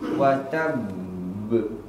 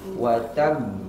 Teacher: qalqalah akbar berada di akhir kalimat tapi dia bertasydid